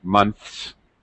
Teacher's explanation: TH here is voiceless, so we're going to make it an S sound, months. Okay, NTHS, but you will often hear reduced pronunciation.